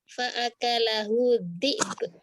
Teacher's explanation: Bukan dhi'ab Ustazah. Ba-nya terakhir qalqalah.